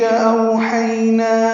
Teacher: او اور حی واولین اور یائلین ہیں، دونوں مثالیں موجود ہیں لین کی، نرمی سے پڑھیں گے اور زیادہ لمبا نہیں کر سکتے